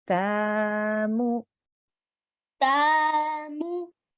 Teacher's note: With the ta, we are going to say it for 2 seconds because there is a vertical fatha here. With the mim, we would just say it for 1 second because we just have a normal dhamma.